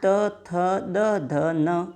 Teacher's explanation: यह दंती व्यंजन कहलाते हैं